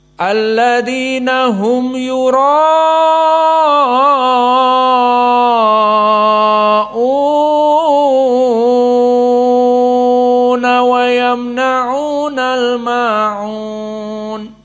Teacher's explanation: Dibaca panjang dari mad wajib muttasil dan mad badal. Maka menurut usul dari Nafi' al-Madani, mad badal itu taslis baina harakatain ataupun mutawassit 4 ataupun al-isba'.